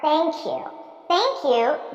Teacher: I transfer the sound to the next word and I say thank you because now I'm able to say it as one word